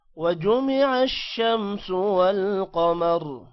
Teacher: والقمر قاف اور را کو موٹا کرنا ہے